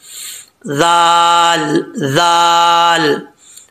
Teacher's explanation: ज़ुबान की नोक ऊपर वाले दांतों के निचले हिस्से से लगे तो जाल पढ़ा जाता है बगैर सीटी के